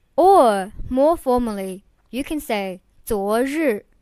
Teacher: 昨, the second tone means yesterday, and 日, the fourth tone means day or sun.